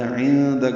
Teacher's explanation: عندک میں نون ساکن کے بعد دال آنے کی وجہ سے اخفا ہے، کاف باریک ہے